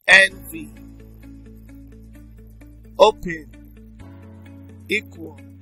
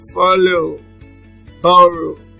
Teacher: the stress falls on the first syllable